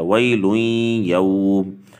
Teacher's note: بعد والا حرف یہ حروف ادغام کا ہے، اس لیے یہاں پر اس کے ساتھ ملا کر پڑھا جائے گا